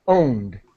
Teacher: there's a D sound, but as quickly as possible